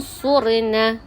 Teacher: Dengung 2 harkat dan bunyi dia antara jelas dan gabung. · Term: ikhfa hakiki